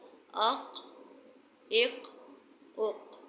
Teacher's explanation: قاف کو ہلا کر پڑھیں گے؟ جب قاف پر جزم ہو۔ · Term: قلقلہ